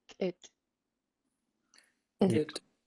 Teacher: you have a pinched K, a short high tone I, and a pinched T